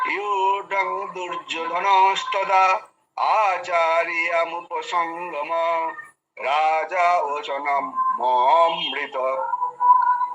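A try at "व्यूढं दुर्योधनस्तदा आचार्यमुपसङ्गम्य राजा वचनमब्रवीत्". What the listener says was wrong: হ্যাঁ, দেখুন আপনার ভুল হচ্ছে কেন জানেন? আপনার কয়েকটা জায়গায় ভুল হয়েছে, তার কারণ হচ্ছে আপনি সেই মানে যেমন আর কি মন্ত্র পড়তে হয়, যেমন আর কি পুজো করার সময় যেমন মন্ত্র পড়ে না, ওই সুরটা আপনি নিয়েছেন, যার কারণে আপনার এখানে ভুল হয়েছে কয়েকটা জায়গায়।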